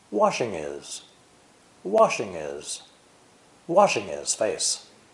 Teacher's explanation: NG with I. Remember that the H sound of his is dropped.